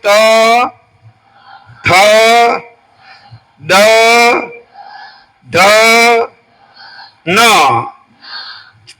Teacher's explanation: ત ઠ દ ધ ન દાંતની પાસે જીભ છે ને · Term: દંત્ય